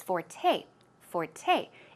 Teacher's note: the word Forte okay it's sor te but it's pronounced Forte the stress goes on the second syllable